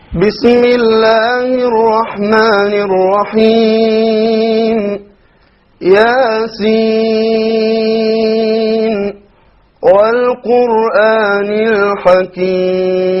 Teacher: So we see he did a mad of 5 on Al-Hakim.